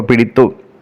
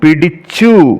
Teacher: ദന്ത്യമായ തകാരം പോയിട്ട്, ത എന്ന അക്ഷരം പോയിട്ട് പകരം ആര് വരുന്നു? താലവ്യമായ ച വരുന്നു. ഇതാണ് താലവ്യ ആദേശം എന്ന് പറയുന്നത്.